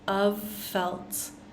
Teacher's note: we start off with that soft v vibration and then go into that F sound of felt